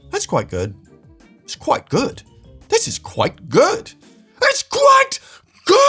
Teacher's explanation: And to be fair, in both countries, the tone of the sentence plays a huge role here. The more your inflection goes up, the more intense that quite is perceived.